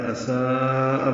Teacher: اساء میں مد متصل ہے، لمبا کریں گے 4 حلقات سے زیادہ. الف مدہ کے بعد حمزہ ایک ہی کلمے میں آنے کی وجہ سے یہ مد متصل بنی ہے.